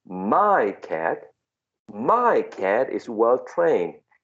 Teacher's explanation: My cat, there's no linking there, right? Because you are stressing the possessive adjective.